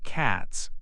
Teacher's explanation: in cats, the T sound is voiceless. So cats ends with an S sound.